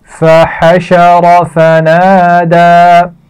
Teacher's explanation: را کو موٹا پڑا جائے گا